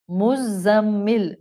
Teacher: مزمل میں زا buzzing sound والی ہے، ایک عربی زبان میں ذال آتی ہے وہ سافٹلی پڑھی جاتی ہے، دال کی فیملی سے جو آتی ہے ذال، یہ را زا ہے، it has a buzzing sound.